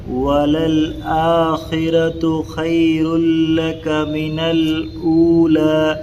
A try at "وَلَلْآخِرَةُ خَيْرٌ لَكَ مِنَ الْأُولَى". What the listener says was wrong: تو خے میں یا لین ہونا، خے خے نہیں پڑھنا، خی۔ وَلَلْآخِرَةُ خَيْرٌ لَكَ مِنَ الْأُولَى،